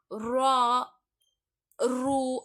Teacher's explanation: கனமாக சொல்லணும் அந்த ராக்கு · ரா சொல்லும் பொழுது நாக்கு பின்பகுதிக்கு போகும். காற்றை வந்து உள்ள அழுத்தி வந்து சொல்ற மாதிரி இருக்கும். காற்றை உள்ள இழுத்து நம்ம என்ன செய்யணும் அப்படின்னா அதை வந்து நல்லா அழுத்தி சொல்ற மாதிரி இருக்கும். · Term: வல்லினமாக ஓதக்கூடிய ரா